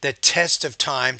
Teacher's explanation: with that t you want to pronounce that with little bit more aspiration